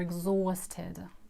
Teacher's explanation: Also h is not pronounced